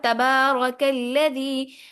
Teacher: را کے اوپر زبر ہے تو را ہر حال میں موٹی پڑی جائے گی